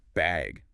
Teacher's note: do you need a bag or even just bag with a rising tone?